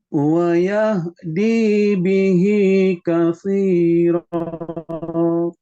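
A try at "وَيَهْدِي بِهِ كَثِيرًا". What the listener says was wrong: V-nya agak kurang panjang. Katsiro.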